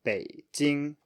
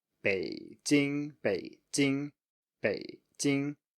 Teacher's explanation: third tone plus first tone, so that's a low plus high, just a clear contrast, nothing strange.